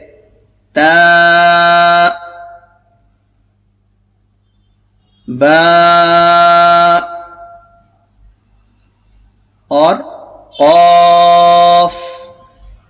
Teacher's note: آواز بالکل رک جائیں گے اور سانس میں جو ہے بہاؤ نہیں رہے گا۔ ٹھیک ہے، یعنی آواز میں بندش پیدا ہو جاتی ہے۔ · آواز جو ہے اخیر میں یہ فوراً رک جاتی ہے۔ یہ اگر اس کے ڈیفینیشن پر آپ نے غور کیا ہوگا، اس کا ڈیفینیشن بھی ہمیں یہی بتاتا ہے کہ جب شدت کے حروف کی ادائیگی ہوگی تو آواز بالکل رک جائیں گے اور سانس میں جو ہے بہاؤ نہیں رہے گا۔